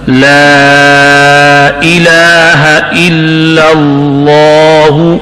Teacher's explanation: مد یوں پڑھیں اور شد، لا الہ الا اللہ، لا والا مد یہ باریک ہے، الا والا پہلا لام یہ بھی باریک ہے، دوسرا جو اللہ کے اندر لام ہے یہ پورا ہے، موٹا ہے